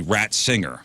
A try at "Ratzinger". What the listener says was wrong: You put a big pause between those syllables.